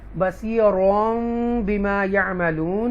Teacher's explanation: واللہ بصیر بما یعملون، مد عارض ہے یہاں پر، اور اس سے پہلے را جو ہے یہاں اقلاب ہوگا کیونکہ تنوین کے بعد با آ رہا ہے اور اس لیے میم ہے